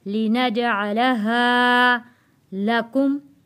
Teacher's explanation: हा हरूफे मद्दा है, इसलिए हमने खींच कर पढ़ा है